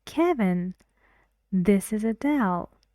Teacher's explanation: the intonation is rising or falling Kevin Rising this is Adele falling